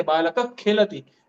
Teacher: क और ख बोलने के चक्कर में हम ये जो विसर्ग है ना वो पूरा नहीं बोलते हैं, वो आधा बोल देते हैं